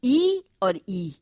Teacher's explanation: संविरित का मतलब है बंध, लेकिन जब जिह्वा और मुख विवर के ऊपरी भाग के बीच कम से कम दूरी रहती है, यानी जिह्वा जो है वो तालु के बहुत नजदीक पहुंच जाती है, तब जो ध्वनियां उत्पन्न होती हैं वो है ई और ई, छोटी ई और बड़ी ई, ह्रस्व और दीर्घ।